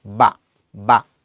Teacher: মুখ থেকে যে বাতাসটা বের হচ্ছে সেই বাতাসটা বের হওয়ার আগে আমার দুইটা ঠোঁট এক জায়গায় হয়ে আবার খুলে যাচ্ছে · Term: ব ধ্বনিটা